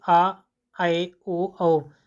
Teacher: जिन स्वरों के उच्चारण में मुख द्वार आधा खुलता है जैसे आ ऐ ओ औ तो इनके बोलने में मुख आधा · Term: अर्ध विवत